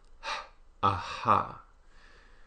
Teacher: the unvoiced glottal fricative h